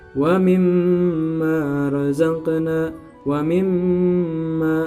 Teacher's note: dengungnya ditambah dengan berharakat 2 atau 3 harakat. Ya, digunakan atau didengungkan 2 sampai 3 harakat. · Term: gunnah